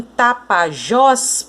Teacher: Então, em Tapajós, por exemplo, a sílaba mais forte é o Jós. Por quê? Porque é ela que tem o acento.